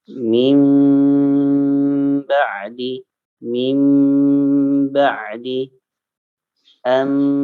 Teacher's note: Tidak ba, ya, tapi bunyinya bunyi mim.